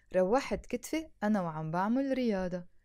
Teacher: make sure you're saying أنا وعم بعمل to make it sound natural with a liaison